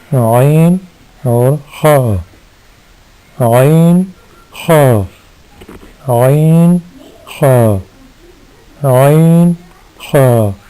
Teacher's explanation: حروف حلقیہ میں پھر آتے ہیں عین اور خا۔ یہ دونوں حروف حلق کے درمیان والے حصہ سے ادا ہوتے ہیں